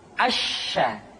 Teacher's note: Berikutnya huruf sya. Sya dikeluarkan dengan cara mengangkat tengah lidah kita ke langit-langit. Asya. Dan sifat yang dimiliki oleh huruf sya yang paling nampak adalah apa yang disebut dengan sifat at-tafashi, yaitu menyebarnya angin di dalam mulut kita.